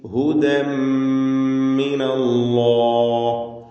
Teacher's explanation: ഇദ്ഗാം ബിഗുന്ന കാമിൽ. ഹുദൻ മിൻ എന്ന ഉച്ചാരണം പൂർണ്ണമായും തൻവീൻ ഉച്ചരിക്കാതെ ശബ്ദമുള്ള മുഷദ്ദദ മീമിനെയാണ് ഉച്ചരിക്കുന്നത്. ഹുദൻ മിനല്ലാഹ്, അല്ലാഹ് എന്ന ഇസ്മുൽ ജലാല അതിലുള്ള ലാമിന് തഫ്ഖീം കൊടുക്കണം, തടിപ്പിച്ച് സ്വരഭാരത്തോടെ ഉച്ചരിക്കുക.